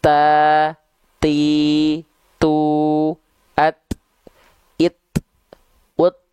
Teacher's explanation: ketika huruf ta dilafalkan Dia Hanya berupa percikan nafas saja